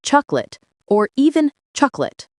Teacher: We don't say chocolate with 3 syllables, we say chocolate, or even chocolate, 2 syllables. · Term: elision